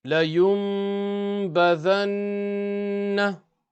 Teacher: We will do ghunna on the last noon because it's mushaddad.